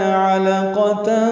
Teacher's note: علقہ میں عین وسط حلق سے ادا کریں گے ، لام باریک اور جلدی پڑھیں گے، قاف پر پڑھیں گے،